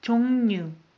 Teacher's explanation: As you noticed, I pronounce R as N.